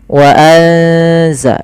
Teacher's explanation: Suara nunnya disamarkan ke zai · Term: ikhfa